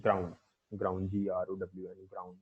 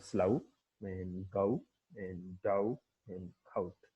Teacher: The lips are neutral in the beginning and rounded towards the end.